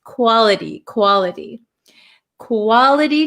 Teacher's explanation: let's look at the pronunciation quality we can say quality but this T um is surrounded by two vowel sounds so this becomes a flap T